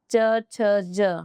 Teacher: च छ ज हमारी जीवा जो है ऊपर तलवे को टच कर रही है तो तालव्य हो गया